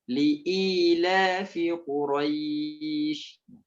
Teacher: kalau tidak dijelaskan huruf hamzah, dia terdengar seperti huruf ha nantinya